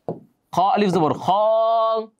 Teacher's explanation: খর সাথে এক আলিফ লম্বা খ